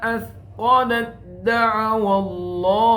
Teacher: athqalat bertemu dengan dal, ta dal, maka harus dimasukkan athqalat da'awallah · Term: idgham mutajanisain